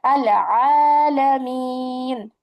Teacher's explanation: এই মাদে আরজি যখন হবে তখন ইহাকে তিন আলিফ, কথাটা মনে রাখেন, তিন আলিফ টানিয়া পড়তে হবে।